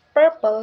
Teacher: the first syllable per is stress so it's purple not purple